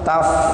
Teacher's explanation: Taf'alu harus keluar udara karena sifat huruf fa itu hamas.